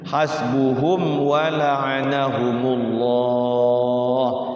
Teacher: Hum wa, jangan hum wa. Enggak boleh didengungkan mimnya. Tapi dijelaskan huruf mim sukunnya. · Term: izhar syafawi